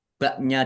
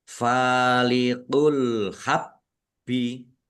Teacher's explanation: Faliqul habbi alif lam alhabbi alif lam qariyah ditandai lamnya dibaca sukun bnya dibaca dobel ada tasdidnya ditekan dan ditahan biar tampak dobelnya